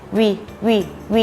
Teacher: ให้ห่อริมฝีปากแล้วเหยียดริมฝีปากออกพร้อมทั้งเปล่งเสียงวีวีวี